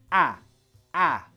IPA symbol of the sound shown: æ